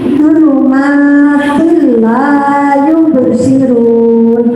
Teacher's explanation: Di sini ada kasrah tanwin bertemu dengan lam. Disebut bacaan idgham bila gunnah, artinya masuk tidak dengung. Jadi kasrah tanwin dibaca masuk ke dalam lam.